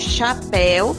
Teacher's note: Já na palavra chapéu, quando separamos a sílaba, a segunda sílaba observamos que o U acompanha a vogal E. Quando pronunciamos chapéu, o E é mais forte que o U. Neste caso, o U é uma semivogal.